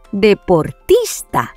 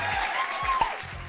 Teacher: La sílaba tónica en esta palabra es tis, ya que suena más fuerte que las demás.